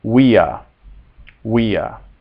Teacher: the v in classical Latin is always pronounced like a w